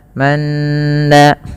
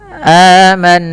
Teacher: tahan bunyi suara nun ketika nunnya berharakat tasydid dan dibaca dengan bacaan gunnah